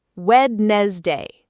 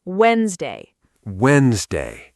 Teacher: The D in the middle is completely silent.